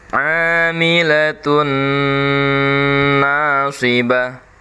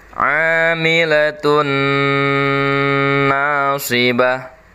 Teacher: tanwin bertemu dengan huruf nun, jadi penekanannya lebih lama lagi. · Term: idgham bi gunnah